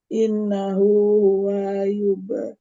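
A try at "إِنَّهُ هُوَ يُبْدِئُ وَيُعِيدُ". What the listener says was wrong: Huwa yub. Langsung. Wanya tidak panjang. Innahu huwa yubdi'u wa yu'id.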